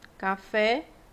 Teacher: na palavra oxítona nós temos a palavra café café a última sílaba é a mais forte